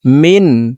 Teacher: নুন সেকেন্ডের পরে ইজহারের 6 হরফের একটি হরফ খ আসছে, এই কারণে নুন সেকেন্ডকে গুন্না ছাড়া স্পষ্ট করিয়া পড়ব। মিন, এখানে বিন্দু পরিমাণ গুন্না করা যাবে না।